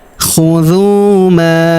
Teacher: huruf ma kita panjangkan empat atau lima harakat karena di depan huruf ma terdapat alif yang di atasnya terdapat tanda garis bacaan panjang empat atau lima harakat yang ini Ya, khudu ma aatainakum.